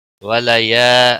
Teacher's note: ولیا الف مدہ ہے، 1 الف کے برابر کھینچ کر پڑھیں گے